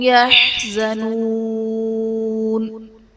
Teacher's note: یحزنون میں واو ساکن سے پہلے پیش ہے، واو مدہ کا قاعدہ اور حرف مدہ کے بعد عارضی سکون یعنی وقف کی وجہ سے ہم نون کو ساکن کریں گے تو یہاں پر مد عارض کا قاعدہ ہوگا